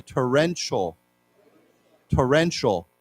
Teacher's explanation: Now the T has a ch sound to it.